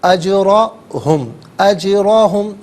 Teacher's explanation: جیم ساکن ہے لیکن حرف قلقلہ ہے، تو سکون کے وقت آواز لوٹتی بھی محسوس ہونی چاہیے۔